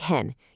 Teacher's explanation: you need to feel your voice drop before it comes back up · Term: third tone